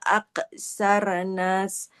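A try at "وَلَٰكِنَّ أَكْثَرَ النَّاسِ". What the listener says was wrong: Bukan aksarnas. Ini ro-nya kan berharokat fathah, bukan aksarnas.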